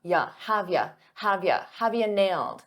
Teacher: a lot of native speakers reduce you to just a y